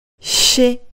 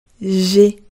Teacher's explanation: シは上の歯のすぐ後ろからシと勢いよく発音し、ジはもう少し後ろの方からジと発音します。